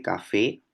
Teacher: café esa K es una oclusiva velar sorda